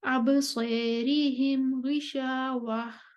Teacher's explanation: تیسرے نمبر پر ابو عمر بصری قصر کر کے آگے آ چکے ہیں، اب ابصارہم پر وہ امالہ کریں گے۔